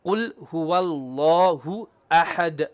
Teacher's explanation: Only the lam of the word Allah will be heavy.